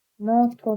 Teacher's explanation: Amma sizə lazım deyil, yəni vurğu yoxdur sizdə. Məsələn, motor sözündə vurğu ikinci hecadadır. Ona görə birinci hecadakı o tələffüzdə A-ya keçəcək. Yəni ki, o vurğusuz qalarsa əgər, belə deyim, vurğudan solda olan o olar keçəcək A-ya.